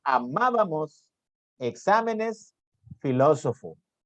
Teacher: esdrújulas. Tienen la mayor intensidad en la antepenúltima sílaba